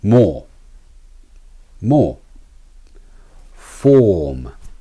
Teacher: lips so the opening is about the size of your thumb the Resonance of ore is at the back of your mouth and it has a low pitch or quality if you usually pronounce the ER for this sound you need